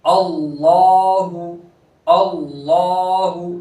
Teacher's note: लफ्ज अल्लाह के लाम को पूर करेंगे